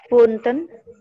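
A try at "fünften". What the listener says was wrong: Funften. Ya, funf, pakai F-nya itu funften. Funften.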